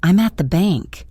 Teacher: You're listening for the strong vowels you learned, but you're hearing weak, neutral vowels instead. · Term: schwa